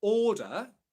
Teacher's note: So in the word order, there's no R sound. Instead, you have a long English vowel sound before the in the first syllable, or.